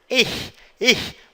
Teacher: A língua ela sobe, o fundo da língua sobe meio que no céu da boca e a ponta da língua trava no dente